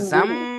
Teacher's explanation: হ্যাঁ, দেখেন নুন সাকিনের পরে নুন যদি, সাকিন নুন সাকিনের পরে যদি বা আসে, তাহলে নুন সাকিনকে মিমের দ্বারা পরিবর্তন করে একালিফ গুণনা করে পড়তে হয়। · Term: ইকলাব